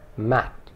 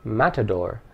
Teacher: It ends with the consonant T, but that consonant is not explicitly sounded. The mouth and tongue get into position for the T, but because there is no vowel after it, the sound remains unsaid. Contrast this with the word matador, and we see that the consonant now is explicitly sounded along with the vowel.